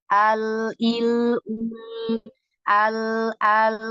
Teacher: 50% suara tertahan, 50% suara menyelinap ke samping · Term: lam